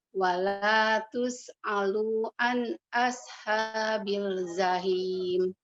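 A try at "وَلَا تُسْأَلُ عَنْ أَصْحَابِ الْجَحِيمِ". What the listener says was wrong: Jim ya. Kemudian lu-nya jangan panjang. Wala tus'alu an.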